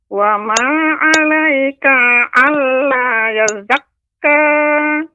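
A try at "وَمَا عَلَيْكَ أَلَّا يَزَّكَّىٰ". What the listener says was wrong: Ka dibaca dengan pendek, Nek. Wa ma 'alaika alla yazzakka. Yazzakka.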